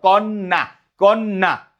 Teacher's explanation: কন্যা ন টা জফলার কারণে দ্বিত্ত উচ্চারণ হচ্ছে